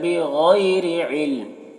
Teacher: اور علم یہاں پر وقف کی صورت میں میم کی جو 2 زیر کی تنوین سکون سے بدل جائے گا، تو علم اس طریقے سے پڑھیں گے۔